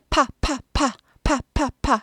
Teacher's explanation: 양쪽 입술, 위아래 입술이 딱 붙었다가 딱 떨어지면서 나는 겁니다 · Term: P